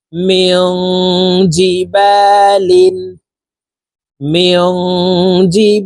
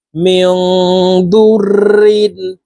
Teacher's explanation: জের জি নুন সাকিনের পরে ইকফার হরফ জাল আসছে এই কারণে এই নুন সাকিনকে নাকের ভিতরে লুকাইয়া গুন্নার সহিত পড়বো